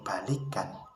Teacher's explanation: vokal I pada kata balikan diucapkan tinggi. Hal itu dikarenakan pengaruh bunyi lain yang mengikutinya. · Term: umlaut